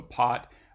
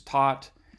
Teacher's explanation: contrasting the bilabial stops with the alveolar stops